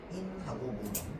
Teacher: 앞말과 뒷말 사이에 니은 소리가 덧나는 경우겠죠.